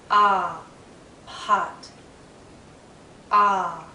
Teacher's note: my lips are relaxed but my mouth is in a very open position my tongue is low inside my mouth low and a bit forward so that the tip does touch